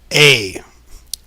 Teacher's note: So you can see how, so this sound A is just like a lowered version of E. You just bring your tongue down lower.